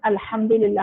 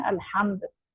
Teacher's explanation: अल्हम्द में हा जो है वो हलक के अंदर से आवाज आती है